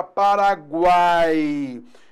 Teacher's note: Eu tenho a vogal A, semivogal U, semivogal I. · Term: tritongo